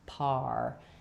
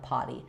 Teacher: And when I'm saying why I said R first and then par is that if I close my lips for the P, but my tongue isn't ready, I'm going to get pa. It's going to be too open and not have that tight R.